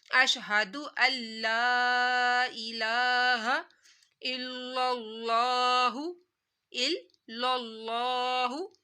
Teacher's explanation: اللہ کو موٹا پڑھا جائے گا کیونکہ لفظ اللہ سے پہلے زبر آ رہی ہے ، تو اس وجہ سے لفظ اللہ موٹا پڑھا جائے گا،